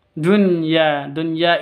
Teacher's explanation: izhar jelas tidak boleh dengung walaupun Nun bertemu dengan Ya kenapa karena Nun bertemu dengan yanya di dua di satu kata